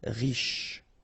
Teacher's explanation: Final E not really pronounced, so sh is the last sound.